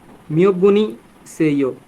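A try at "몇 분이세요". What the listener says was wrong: খুবই সুন্দর, very good, আপনি বুঝতে পারছেন।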